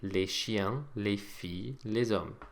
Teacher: the S that we've put on the end of each of these words to make them plural, as we've already seen, is silent